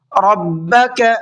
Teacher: را کو پر کر کے پڑھیں گے، منہ بھر کے پڑھیں گے